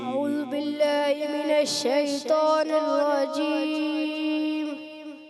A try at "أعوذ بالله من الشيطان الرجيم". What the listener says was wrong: اعوذ دال کی پیش کلیئر کریں گے.